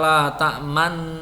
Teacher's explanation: Ismam adalah isyarah mencucu di tengah dengung.